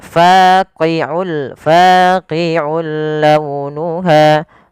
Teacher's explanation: Fa panjangkan dua harakat karena dia mad th'i.